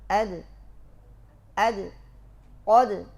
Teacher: Ketika sukun harus ada qalqalah dan qalqalahnya juga mesti tipis.